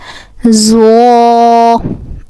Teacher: This Zo with the tip of the tongue touching the edge of the upper to front teeth